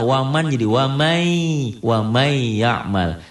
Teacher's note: Ditahan satu alif ya, disertai dengan dengung, itu idgham bigunnah.